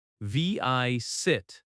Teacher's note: Visit has stress on the first syllable as well.